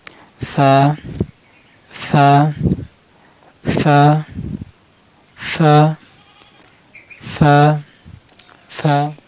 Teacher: জিবার আগার সামনে উপরে দাঁতের আগার সাথে লাগান, দুই দাঁতের আগার সাথে লাগান।